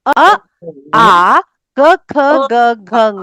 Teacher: इतने वर्णों का उच्चारण करने में हमको जीभ का दांत का होठों का किसी का भी सहारा नहीं लेना पड़ा। सीधे कंठ से ये वर्ण बाहर आ गए। जो कंठ से उच्चारित होने वाले वर्ण है उनको हम कहेंगे कंठ्य वर्ण।